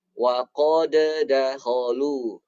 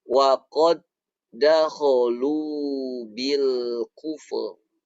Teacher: Maka dal yang pertama ini jangan dipantulkan.